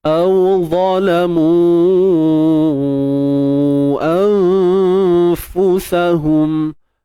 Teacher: Dengung nipis dia sebab dia jumpa dengan huruf fa nipis pun, so dengung pun nipis. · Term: ikhfa haqiqi